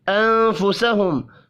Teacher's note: نون ساکن کے بعد فا ہے، اخفاء حقیقی ہوگا